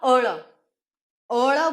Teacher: ટેકરો આવતા જીભ વળે છે ઉપર માટે એને પાર્શ્વિક વ્યંજન કહે છે